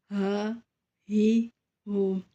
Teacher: ہا کو ہم سینے سے ادا کریں گے